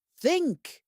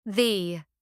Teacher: Think is a hard th. The is a soft th. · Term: th sound